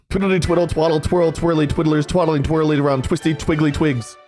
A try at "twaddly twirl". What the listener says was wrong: But you said twaddle twirl instead of twaddly twirl.